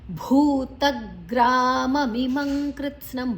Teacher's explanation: ಮಾದ ನಂತರ ಅನುಸ್ವಾರದ ಉಚ್ಚಾರಣೆ ಂಗ್ ಮತ್ತು ಮುಂದಿನ ಅಕ್ಷರ ಕ ಇದೆ.